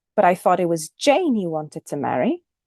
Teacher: the tonic syllable is Jane the tail is you wanted to marry you wanted to marry the head is thought it was thought